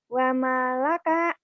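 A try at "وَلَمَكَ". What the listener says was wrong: itu nggak, kalau mim dulu nggak mungkin. Bukan wamalaka tapi walamaka. Ini kan lam ya, Bu ya. Ini kalau nulis mim dulu pasti gitu tuh lam. Ini lam dulu, lam terus mim tuh, Bu ya.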